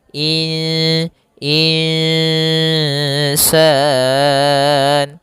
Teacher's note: nunnya kita samarkan kepada huruf sin kemudian terdengar suara samar-samarnya in insan insan panjangkan dulu dengungannya atau panjangkan dulu ikhfanya panjang Bkan dulu bacaan gunanya dua harakat in dan itu tipis ke huruf sin insan. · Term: bacaan ikhfa